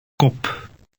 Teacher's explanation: The letter P in Dutch is less explosive than in English.